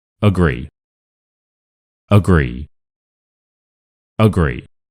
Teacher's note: it's quite obvious that the gree is a lot louder and the uh is a lot faster and that is why it's awah sound. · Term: stressed